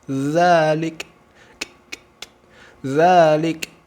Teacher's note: huruf Kaf disukunkan Munculkan sifat Hames percikan nafas